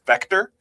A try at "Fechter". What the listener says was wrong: Fector. With an F